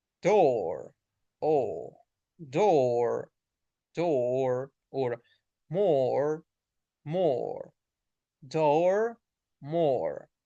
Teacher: you have to round the lips and you're going to hear a longer sound.